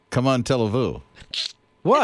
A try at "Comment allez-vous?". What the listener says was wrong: It sounds like you're saying, come on, turn on the TV.